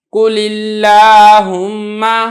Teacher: لفظ اللہم سے پہلے زیر ہے لہذا لفظ اللہم کو میں نے باریک کر کے ادا کیا ہے